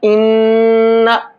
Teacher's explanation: नाक में आवाज़ को रोक करके पढ़ना, इन्ना, ये गुन्ना कहलाता है।